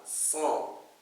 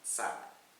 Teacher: pangkal lidah terangkat, jadi bunyinya tebal